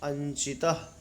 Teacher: नासिका स्थान वाले अनुस्वार के स्थान पर नासिका स्थान वाला ञ होता है।